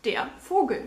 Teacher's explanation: The V sound in German is actually pronounced as F